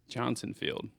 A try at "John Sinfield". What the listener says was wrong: Sinfield. No, John space Sinfield. His name is John, not Johnson, though. John Sinfield.